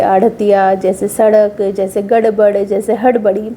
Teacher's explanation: हमारी जीभ ऊपर गई, मुंह की छत पर ऊपर की तरफ गई और फिर फेंक दी गई। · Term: उत्क्षिप्त व्यंजन